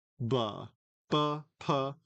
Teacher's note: So you have the first one being low, b, and the others being high, b and p